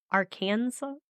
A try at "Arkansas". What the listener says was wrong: So saying Arkansas like you would how you pronounce Kansas. Arkansas. Like how we say the state.